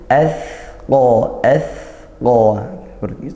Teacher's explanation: hati-hati ini tsa ya bukan Sin tsa jadi ujung lidah ke gigi